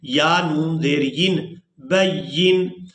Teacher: وقف کی صورت میں نون کو ساکن کر دیں گے، یا کو نون ساکن کے ساتھ ملائیں گے